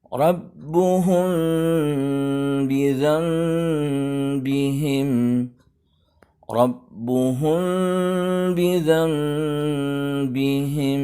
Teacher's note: bunyi M-nya disamarkan dan suara samar M-nya ditahan dulu, tidak tergesa-gesa dengan ghunnah yang sempurna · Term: ikhfa syafawi